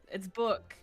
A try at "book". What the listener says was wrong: There's no E. why do you need to harden those consonants? What's with hardening the consonants for?